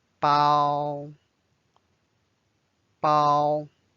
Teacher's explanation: it's the first tone so it's a flat bow